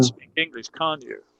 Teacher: That's falling intonation, so I think you can speak English